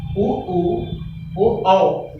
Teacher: यहाँ ओठ हमारा गोल घूम रहा है